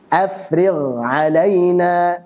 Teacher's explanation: Ghain sukun sebelumnya kasrah, jangan terlalu tebal.